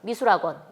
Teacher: 히읗이 이 모음과 공명음 사이에서 좀 탈락되는 경향을 보입니다. 그래서 히읗 소리가 약해지죠. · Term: 히읗이 없어졌어요